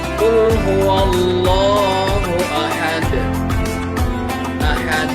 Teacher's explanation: qalqalah kubro dibaca dengan suara pantulan yang kuat atau besar ya. Biasanya qalqalah kubro ini dibunyikan ketika bertemu dengan 5 huruf qalqalah yang posisinya itu biasanya ada di akhir kalimat atau ayat.